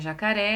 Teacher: a silabar é de jacaré é a última sílaba da palavra Então essa palavrinha jacaré ela é classificada em oxítona porque é a última sílaba mais forte